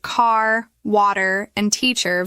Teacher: Americans pronounce the R sound at the end of words like car, water, and teacher very clearly.